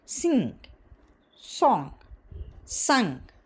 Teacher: Thus, ng is a voiced velar nasal. You can see in the diagram the back of the tongue and soft palate. · back of the tongue and soft palate, the closure is formed between the two.